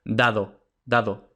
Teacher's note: el velo del paladar permanece elevado y las cuerdas vocales vibran